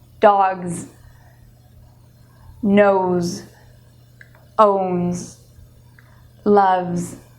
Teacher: So it's a Z sound and it comes from the throat. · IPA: /z/